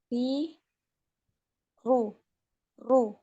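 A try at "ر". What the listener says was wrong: Nah, ini takrirnya harus dikurangi ya.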